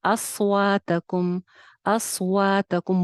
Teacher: सौद का मखरज नीचे वाले 2 दांतों का किनारा है, सीटी के साथ आता है · वाव पे होंठ गोल होंगे